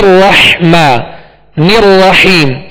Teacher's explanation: दोनों रा पर जबर है लिहाज इनको पुर पढ़ेंगे मगर पुर करते हुए होठों को गोल नहीं पढ़ेंगे